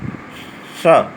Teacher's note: जब जिह्वा को मूर्धा से स्पर्श करा करके, यानी दांत और तालु के बीच का भाग स, तो वह निकलेगा मूर्धन स